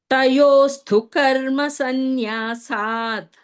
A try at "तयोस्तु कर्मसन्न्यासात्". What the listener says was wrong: தயோஸ்து கர்ம சந்நியா. அங்க வந்து தயோஸ்து அங்க ஸ்ட்ரெஸ் பண்ணாதீங்க.